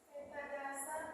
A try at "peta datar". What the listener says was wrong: Peta datar, bukan dasar, datar.